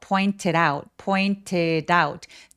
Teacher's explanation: 혹은 out 이렇게 티바음을 살짝 내 주셔도 괜찮아요. Pointed에 드 소리가 모음과 만나서 pointed out pointed out 다웃으로 연음해도 되고요.요 모음과 몸 사이에 point it out 이러면서 굴러가는 소리 내 주셔도 됩니다.